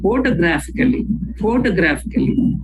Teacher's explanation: when we say photographically we stress on the first syllable and also third syllable